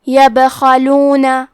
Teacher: کلمت یبخلون میں کیونکہ با پہ جزم ہے تو ہم حرف البا کو قلقلہ سے پڑھیں گے